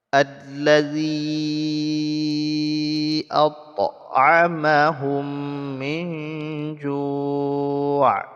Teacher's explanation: menyembunyikan suara nun mati ke dalam huruf ikhfa sehingga bunyi nun mati ini tidak lagi terdengar jelas · Di allazi mad asli bertemu dengan hamzah di kalimat yang lain karena allazi dan at'ama ini adalah kalimat yang berbeda. Jadi dipanjangkan zi-nya sampai 5 harokat. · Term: mad jaiz munfasil